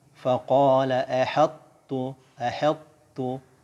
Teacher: karena huruf to ini adalah huruf isti'la, jadi masih ada asarnya, masih ada tebalnya di situ sebelum masuk ke huruf tu.